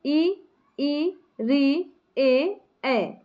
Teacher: अग्र स्वर। अग्र भाग से होना मतलब जीहवा का जो आगे वाला भाग है थोड़ा सा उठ जाता है। उसे हम बोलते हैं अग्र स्वर। · ऐसे स्वर जिनका उच्चारण जिह्वा के अग्रभाग से होता है